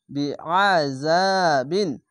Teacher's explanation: জা বিন যাওয়ার পাশে খালি আলিফ এক আলিফ টেনে পড়বেন এবং আইনটিকে মোটা করে গলা চিপে পড়বেন